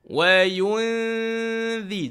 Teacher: kalau nun kosong dia jumpa dengan huruf zal maka dengung dia adalah dengung nipis